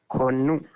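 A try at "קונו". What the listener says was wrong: So it's a little tricky because it's this double nun. So there's a little bit of vocalization. Konnu. Konnu.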